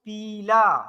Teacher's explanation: तो ई का उच्चारण एकदम स्पष्ट हो रहा है, एकदम प्रॉपर सुनाई दे रहा है, ज्यादा समय ले रहे हैं, तो ये दीर्घ है। तो ऐसे अक्षर ऐसे स्वर जिनको बोलने में ज्यादा समय लगता है वो दीर्घ माने जाते हैं।